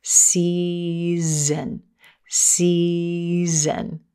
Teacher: the S at the beginning of this word is voiceless s c then z z we turn on our voice the